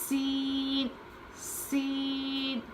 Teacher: सीन में सीटी की आवाज होती है